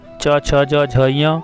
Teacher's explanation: च वर्ग में ये सभी वर्ण तालु का स्पर्श करते हैं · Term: तालव्य